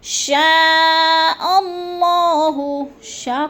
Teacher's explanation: شاء کو لمبا کرنا ہے، مد متصل ہے،